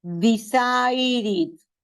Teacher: esta E se convierte en I al momento de la pronunciación.